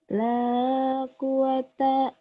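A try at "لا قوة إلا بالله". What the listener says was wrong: kurang tasydidnya. Tasydidnya kurang nyamber. La quwata illa billah. Quwata. La quwata illa billah gitu. Nyamber. La quwata. La quwata. La quwata illa billah.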